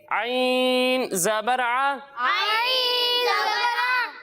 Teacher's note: جب ہم عین کی ادائیگی کریں گے تو اس کی ادائیگی حلق کے درمیانے حصے سے ہوگی